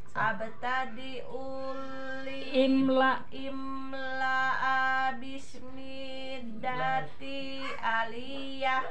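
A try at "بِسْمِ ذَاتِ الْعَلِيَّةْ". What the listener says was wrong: Ya, tilnya bismidatil aliyah. Abtadi ul imla bismidatil aliyah.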